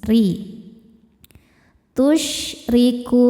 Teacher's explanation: Cara bacanya ro ini dibaca dengan tipis.